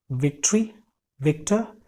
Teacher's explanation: वी होगा तो हमको एयर फ्लो को नैरो करना है अपने ऊपर के दांतों से और नीचे के होठों से।